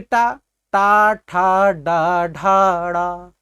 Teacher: आप टा का उच्चारण करते हैं, आपकी जिह्वा ऊपर चली जाती है, मूर्धा से स्पर्श करती है